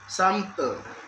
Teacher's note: in the word sample, it has two syllables, a sample. The stress is placed in the first syllable